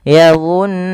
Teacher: menahan suara nunnya sepanjang 2 harokat. Maka yadhunnuna jangan langsung yadhunnuna tapi ditahan dulu nunnya yadhunnuna. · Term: gunnah